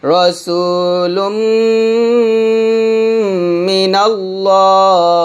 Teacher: দুই ঠুট মিলে গুণ করবেন